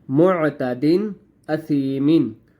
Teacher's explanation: حمزہ جو ہے وہ حروف حلقی میں سے ہے، اس لیے ہم نے غثاءً کو ظاہر کر کے پڑھنا ہے، یعنی اظہار کر کے پڑھنا ہے.